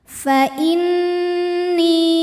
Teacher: Cara membacanya dengungkan. Jadi bunyi n-nya tahan sampai ada suara masuk hidung. Fa inni, ni hukumnya mad jaiz munfasil karena ada mad tabi'i ketemu dengan hamzah dalam dua kata. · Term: nun musyaddadah